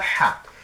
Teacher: হাটা উচ্চারণ কণ্ঠনালীর মাঝখান থেকে